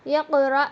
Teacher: இந்த ஆஃபை அசைக்கணும். இக்ர அப்படின்னு சொல்லி ஓதக்கூடாது. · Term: கல்கலா